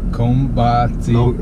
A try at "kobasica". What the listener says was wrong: No M. Koba.